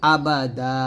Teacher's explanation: যদি এখানে থামেন তাহলে বলতে হবে আবাদা, দা বলতে হবে, এক লিপ টান হবে